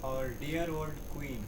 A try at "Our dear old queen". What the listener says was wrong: Yeah, dear will be still longer. Our dear. Make it again. Say it again.